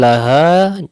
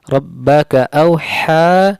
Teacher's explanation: Rabbaka awha ha tipis, ha dibaca 2 harokat disebabkan ada mad alif dan setelahnya tidak ada hamzah ataupun sukun asli. Dan laha ha besar makhrajnya di tenggorokan bawah, ha tipis makhrajnya di tenggorokan tengah